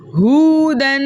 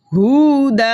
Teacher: ہم نے 2 زبر کی تنوین کو الف مدہ سے بدل دیا. اب یہاں پر ہم نے تبدیلی کی, اس لیے یہاں وقف بنے گا وقف بالابدال.